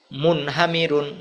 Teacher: নুন সাকিনের পরে গুনা হল না